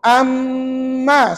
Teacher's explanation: Ustaz tutup dah bibir. Pasal huruf mim tu sebutannya di bibir. Tak payah guna lidah dan sebagainya. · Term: idgham syafawi